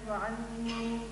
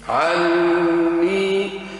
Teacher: عندك الغنة في النون والمد بينهما